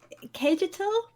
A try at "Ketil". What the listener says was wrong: I would think that the J is probably pronounced like a Y, so it's probably Ketil.